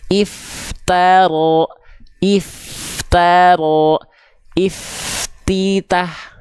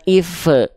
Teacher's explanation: If, nah perhatikan, biar gak mantul, biar gak if taro, f-nya jangan dulu lepas, baru masuk ke huruf berikutnya